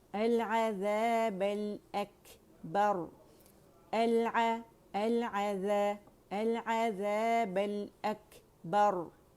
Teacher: हम्स आपको हवा feel होगी जब आप अकबर कहेंगे, ठीक है। कैफ के मखरज से ही आपने वहाँ से आवाज़ जो है हम्स की निकलेगी, कहीं और से आपने आवाज़ नहीं निकालनी क्योंकि वहीं आप मखरज को हटा रहे होते हैं, ठीक है।